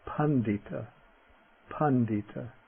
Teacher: Ok, the voiced retroflex: ḍ